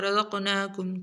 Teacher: را قاف موٹے اور قاف کے اوپر کلکلا